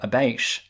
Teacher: the T sound becomes this really long, lingering sh sound